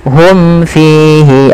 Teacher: Hum fihi, ada mad tabi'i lagi pada lafal fi. Ini mim mati bertemu fa, ada idhar syafawi, jelaskan mimnya.